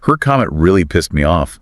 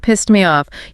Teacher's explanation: it's a very soft T. Almost disappears sometimes, especially in a sentence